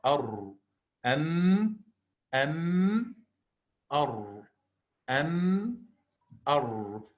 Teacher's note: Just a little bit back of the makhraj of the Noon, the makhraj of the Ra lies.